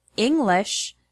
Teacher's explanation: the word English has the stress on the first syllable